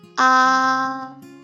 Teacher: first tone, it's high and flat.